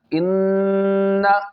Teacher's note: گنہ کرنا ہے لیکن کھینچنا نہیں ہے